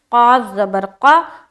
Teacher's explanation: قاف کو منہ بھر کر بولنا ہے، قاف موٹے حروف میں سے ہے